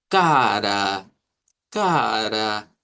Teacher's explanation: Si nosotros dijéramos cara con acento del portugués, tendríamos que decir algo como cara, cara. que suene más fuerte esta segunda A, porque precisamente es la A media centralizada